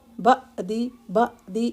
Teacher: عین ساکن ہے تو سکون سے بعدی، بعدی بعدی، اس طرح سے جھٹکا نہیں دیں گے